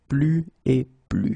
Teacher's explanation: you can see that I don't pronounce the final S